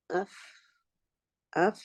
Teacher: contact taking place between the edge of the top teeth and the moist part of the lower belly of the lower lip